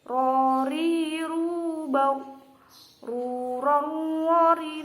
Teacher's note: makhrajnya ro ini ujung lidah agak ke dalam mengenai gusi gigi depan atas. Ro, ro. Dan cara pelafalannya juga harus dibaca tebal karena ro ini adalah salah satu huruf istifham. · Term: huruf ro